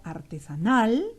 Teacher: artesanal donde la intensidad está en la última sílaba